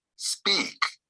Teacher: in this case the P loses strength so now you put the strength on the S